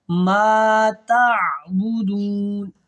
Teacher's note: عین کو حلق سے ادا کریں گے، میم الف زبر ما ہے، یہ حروف مدہ ہے، الف مدہ ہے، ٹھیک ہو گیا۔